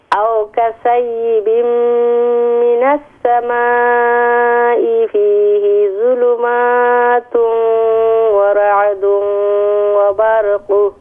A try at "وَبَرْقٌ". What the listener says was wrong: وبرق را کو ساکن ہے.